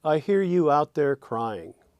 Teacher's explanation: that has essentially three strong stresses and a feminine ending